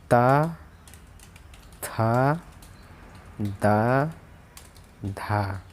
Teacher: दंत व्यंजन कहलाते हैं दांतों से जो थोड़ा लगते हैं, जैसे दांतों से जुबान लगती है, ता, था, दा, धा।